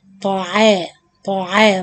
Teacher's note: the طا heavy, the عين light